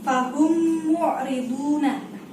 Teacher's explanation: ketika ada hukum mim sukun bertemu dengan mim, cara bacanya seperti apa? Cara bacanya yaitu berdengung. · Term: idgham syafawi